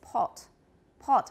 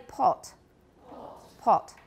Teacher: in British English, they do have a lower back, somewhat rounded vowel.